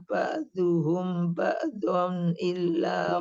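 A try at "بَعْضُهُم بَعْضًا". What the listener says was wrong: Humnya panjang Bu, di sini ikhfa Bu. Ba'duhum ba'don.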